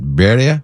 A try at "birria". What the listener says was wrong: How you say it? Birria? Yeah, got to roll the R. There's the roll. Birria.